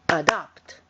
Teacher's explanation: Notice the stress is on the second syllable.